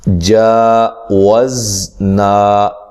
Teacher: کھڑی زبر اور الف مدہ دونوں کو ایک جیسا لمبا کرنا ہے اور زا کو ہلانا نہیں ہے.